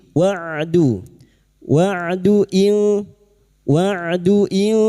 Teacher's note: huruf ain sukun jangan tertukar hamzah